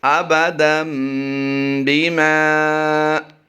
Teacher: میم الف زبر ما، الف مدہ کرتے ہوئے لمبا کیا ہے ہم نے